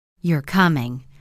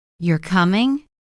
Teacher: If I say, You're coming, falling tone. That sounds like a statement, I'm sure you're coming. But if I say, You're coming, rising tone, it becomes a question